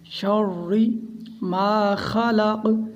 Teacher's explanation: را کو پہلے شین کے ساتھ موٹا پڑھیں گے، بعد میں باریک پڑھا جائے گا